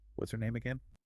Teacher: The es sound is fused directly onto the pronoun her.